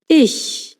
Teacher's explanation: ch sounds a bit like English sh but instead of rounding your lips as in show, you pronounce it with the lips stretched